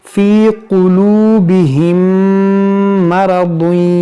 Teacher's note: मीम साकिन के बाद दूसरी मीम है, तो यहाँ पर इदगाम शफ़वी करेंगे, गुन्ना करेंगे